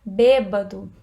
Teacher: bêbado tem acento tônico na antepenúltima sílaba